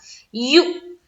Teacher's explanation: یو جھٹکا دیں گے حمزہ ساکینہ کا